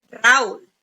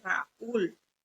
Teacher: el golpe fuerte de la palabra cae en la U